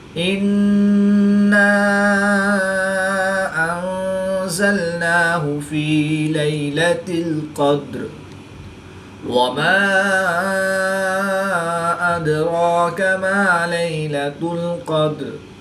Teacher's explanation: نون ساکن کے بعد زا حروف اخفا میں سے ہے، تو یہاں پر اخفا ہوگا یعنی غنہ زمانی کر کے پڑھیں گے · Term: قلقلہ صغریٰ